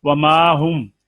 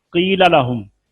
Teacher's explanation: क़ील लहुम, ये याए मद्दा है, इसके बाद हमजा और सुकून नहीं है, लिहाजा ये दोनों जगह जो हैं ये मद्दे असली और इनकी मिक़दार कसर होगी